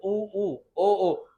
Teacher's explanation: ऐसे स्वर जिसके उच्चारण में होठों की स्थिति गोलाकार होती है वृत्तमुखी कहलाती है